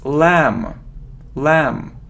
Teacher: no we don't pronounce b